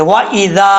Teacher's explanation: زبان کا سیرا اوپر والے دانتوں کے اندرونی کنارے سے لگے تو ذال پڑھا جاتا ہے، بغیر سیٹی کے ساتھ ادا ہوگا۔ اس کے بعد مد ہے، مد منفصل، 2.5 الف کے برابر